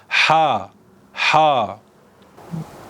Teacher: bu türkçemizde olmayan bir harf ha harfi boğazımızdan havanın çıkmasıyla oluşur